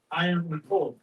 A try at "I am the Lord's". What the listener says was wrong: One shall say, I am the Lord's, with the S on the end, right?